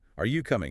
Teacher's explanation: Yes, no questions rise at the end. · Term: intonation